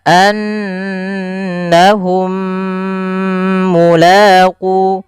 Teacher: mim Yang Pertama masukkan yang mim kedua kemudian ditahan maka anahum mulqu ditahan dulu banyak juga yang tidak menahannya misalkan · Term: Idam Mimi, idgham mimi